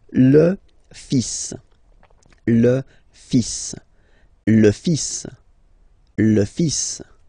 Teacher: and then strangely you pronounce the final S.